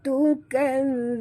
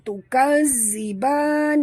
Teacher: Jangan tarik. Zal tu jangan ditarik ya. Lembut saja.